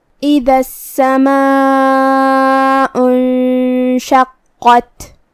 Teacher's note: کلمت اذا میں الف کے نیچے زیر ہے تو ہم حمزہ کو نیچے سے ادا کریں گے. حمزہ کی ادائیگی حلق کے نیچے والے حصے سے ہے. دال کو ہم زبان کے سر اور اوپر والے دانتوں کے اندرونی کناروں سے ادا کریں گے.